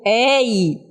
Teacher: E quando a gente diz de tongo aberto, é porque no momento de eu pronunciar esse ditongo, a articulação da na da da palavra das duas vogais, eu vou vou falar de forma abertamente, a boca vai abrir mais. Então, eu digo ei, né? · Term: ditongo aberto